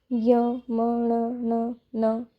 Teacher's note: इनका जो उच्चारण है वो नासिका से होता है। नासिका यानी कि नाक नोज।